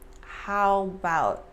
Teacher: we kind of drop the a in about